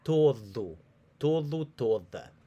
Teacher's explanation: if that D comes in the middle of a word, it's got more of the TH sound that we produce in English with in words like the.